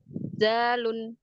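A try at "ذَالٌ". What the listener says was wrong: Coba jangan terlalu nempel banget, agak longgar sedikit. Persentuhan ujung lidahnya ke ujung gigi. Jadi agak sentuhnya manja. Zalun biar ada rohwahnya. Zalun.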